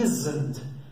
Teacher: O som desse S é um Z. Isn't, é um Z na verdade, isn't.